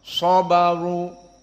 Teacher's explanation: shad di sini mufakhamah, sabaru, dan ra kadzalik mufakhamah karena di sini dalam keadaan dhammah.